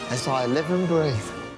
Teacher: The Z sound from as links to I, and the V from live is connected to the reduced end, which loses D sound as the end.